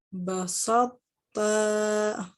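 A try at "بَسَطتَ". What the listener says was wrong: Sinnya jangan terikut tebal. Basalta. Nah, jadi tetap ada itobaknya pada huruf to-nya kan. Jadi yang hilang hanya sifat qalqalahnya. Jadi kalau sudah tahu kita hukum idgham mutajanisain ini, jangan begitu kita bertemu dengan ayat ini kita bacanya masih salah.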